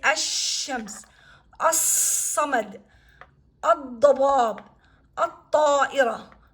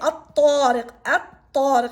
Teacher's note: When these alphabets follow the L, the article, we're not going to pronounce lam. Lam sound is swallowed or deleted. And you're going to pronounce it as a, and the consonant that comes behind it.